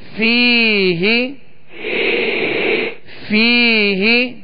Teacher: یا مدہ ہے ایک الف کی مقدار اسے کھینچ کر پڑھیں گے